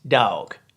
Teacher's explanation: in the south it's just one syllable